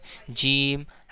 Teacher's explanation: बीच जबान बीच तालू से मिलकर जीम अदा होता है।